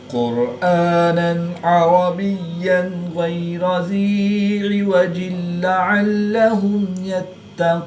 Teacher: आगे या साकिन से पहले हर्फ के नीचे ज़ेर है तो इसलिए यहाँ पर अदा होगा, एक अलिफ एंड 2 हरकत के बराबर खींच कर पढ़ेंगे। दो ज़ेर की तनवीन के बाद लाम हर्फ मालूम में से है तो यहाँ पर इदगाम बिला गुन्ना होगा, गुन्ना नहीं करेंगे।